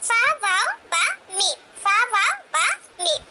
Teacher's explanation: और इस शफतान वाले हिस्से से यानी कि हमारे होठ से 4 हर्फ की अदायगी होगी और वो 4 हर्फ हैं फा, वाव, बा, मीम। फा, वाव, बा, मीम, ये 4 हर्फ की अदायगी हमारे दोनों होठों से यानी कि शफतान से होगी